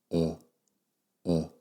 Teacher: it's at the bottom of your mouth it's like almost resting on the bottom of your mouth because there's no tension there's no like contraction of the muscles it's actually the easiest sound to make that's why it's the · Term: schwa